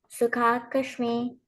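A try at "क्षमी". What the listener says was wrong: Shami. The K is a little bit silent here. Sama, Dukkha, Shami. You will say Shami. Um, not with the K. Okay, K is a little bit silent. You can say Shami.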